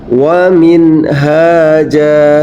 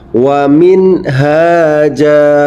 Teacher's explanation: ha yang ini cara membacanya pun sama wajib jelas Win haaja sekali lagi membacanya nun mati terbaca dengan jelas